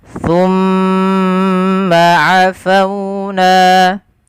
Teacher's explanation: Pada lafal bacaan thumma, di sini ada bacaan gunnah pada lafal mim yang berharakat tasydid.